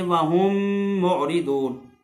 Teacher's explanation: ایسے ہی ادغام شفوی کی ایک اور مثال وہم معرضون، وہم کے آخر میں میم ساکن ہے اور اس کے بعد جو ہے پھر میم آ گئی ہے معرضون میں، تو یہ میم کو میم میں ادغام کر کے غننے کے ساتھ پڑھیں گے